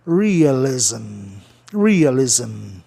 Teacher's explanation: Aí a sílaba tônica recai sobre o E.